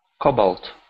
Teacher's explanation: stress the beginning of the word Cobalt